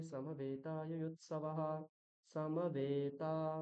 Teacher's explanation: হুম, এখানে সকার এবং মকারের পরে যে অকার তার হ্রস্ব উচ্চারণ, এবং মকার, সরি এখানে বকার হবে, বকার এবং তকারের পরে যে একার আর আকার রয়েছে তাদের দীর্ঘ উচ্চারণ হবে